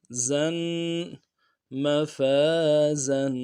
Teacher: زا کو مضبوطی سے جماعوں کو ساتھ ادا کرنا ہے، سیٹی نکلے گی زا کی، زا دو زبر زن، زن، مفازن۔